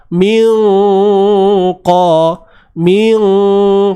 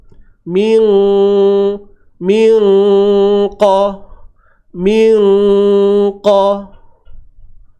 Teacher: huruf qaf, huruf yang tebal, yang mana pangkal lidah akan naik ke langit lembut.